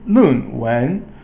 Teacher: Now the next one is Lun, Wen. Lun is fourth tone and Wen is second tone. So fourth is falling, second tone is rising.